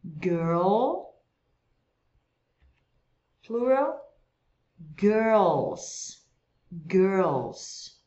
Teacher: Enrola a língua no R e pronuncia esse L também no céu da boca.